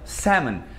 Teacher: Não tem som de L, porque senão ficaria salmon.